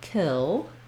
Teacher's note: the first syllable has the clear vowel and the length, kil, and then our letter O, instead of an ah, in this version, kilometers, or in kilometers, it's going to be reduced to the schwa, killa.